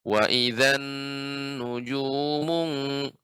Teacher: Wa idzan, nun tasydid juga. Nun tasydid pada huruf nun lebih lama, dipanjangkan tempo gunahnya.